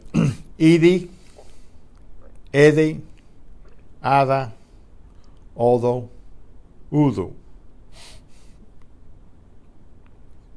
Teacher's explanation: After a vowel, the articulation is relaxed to let air escape through the mouth while the D is being pronounced. The result is similar to the TH of the English father. The tongue touches the upper teeth.